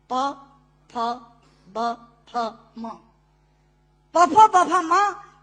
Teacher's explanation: दोनों होंठ मिलाकर बोले जा सकते हैं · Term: ओष्ठांग